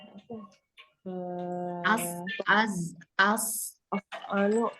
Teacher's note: ada sofirnya, ada desisnya.